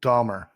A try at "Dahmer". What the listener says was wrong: It still sounds like you're putting an L in there. No, The real killer, the serial killer, his name's spelled with an H, not an L. No, it's yes, Dahmer. That's how it should sound.